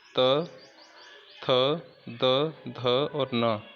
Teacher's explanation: ट वर्ग में देखो त, थ, द, ध और न, ये दांतों की सहायता से बोले जाते हैं, तो इसको हम कहते हैं दंतय। तो देखो बोल के देखते हैं, तो दांतों से जीभ जरूर टकराती है, इसीलिए हम इनको दंतय कहते हैं।